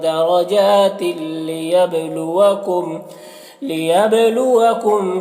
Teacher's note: تنوین کو لام سے ملا کر بغیر غنہ کے پڑھیں گے ، اس کو ادغام تام کہتے ہیں، لیبلوکم با میں قلقلہ